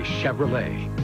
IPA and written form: ʃɛvrəˈleɪ (Chevrolet)